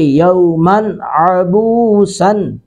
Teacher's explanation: اب حروف اظہار جو ہے وہ اس کا تقاضا یہ ہے کہ نون ساکن، نون تنوین کو بالکل ظاہر کر کے پڑھا جائے، ناک میں آواز نہ لے جائے